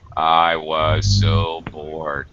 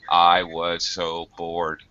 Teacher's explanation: When we're bored, we tend to use absolutely neutral, no inflection, up or down pitch changes when we're bored. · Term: no pitch change